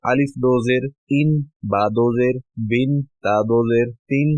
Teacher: تنوین کو پڑھنے کے لیے حرف کے ساتھ ایک نون کی آواز کو پیدا کرنا ہے جو ظاہری طور پر نہیں لکھی ہوتی لیکن پڑھی جاتی ہے